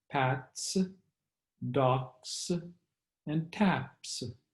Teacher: if the word ends with a voiceless consonant, then the plural S is also voiceless and pronounced as S